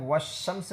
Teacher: لام کو نہیں پڑھا جائے گا، بلکہ واو ڈائریکٹ شین کو پکڑے گا، ٹھیک ہے، تو والشمس میں لام چھپ جا رہا ہے، اس لیے اسے حروف شمسیہ کہتے ہیں۔ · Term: ادغام